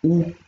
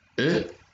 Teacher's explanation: comme le OU, mais au lieu d'avoir les lèvres arrondies, on n'arrondit pas les lèvres, donc au lieu de faire OU, on fait E.